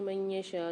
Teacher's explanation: نون ساکن کے بعد یا مشدد آ رہی ہے، ادغام مال غنہ کے 4 حروفوں میں سے غنہ کر کے پڑھیں گے